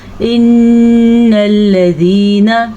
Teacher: سب سے پہلے نون کے اوپر شد ہے تو نون پہ غنہ کریں گے